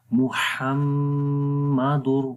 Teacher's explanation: تو پڑھیں گے محمد، ہا کی آواز ہے تو ہا ہی پڑھیں گے، ہا گلے کے درمیان والے حصے سے پڑھا جاتا ہے. محمد، را کو موٹا پڑھیں گے کیونکہ را کے اوپر زبر ہے، جب را کے اوپر زبر آئے اس کو موٹا پڑھیں گے، اس لیے را گرین ہے.